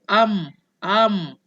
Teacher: Mulut kena rapat. Sebab mim ni tempat keluar dia makhrajnya daripada bibir. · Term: mim mati